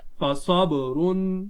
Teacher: را دو پیش رن, فصبرن. با پر قلقلہ ظاہر کرے کیونکہ حرف قلقلہ ہے اور ساکن آ رہا ہے